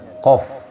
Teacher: itu tempat keluar huruf qof paling pangkal ini ya paling belakang